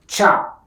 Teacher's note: The sound cha is called palatal plosive. To pronounce the sound, the tongue is placed on the hard palate, the air is blocked completely and releases suddenly.